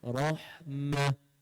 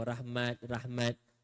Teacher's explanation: R tebal tetapi masuk ke dalam ha nipis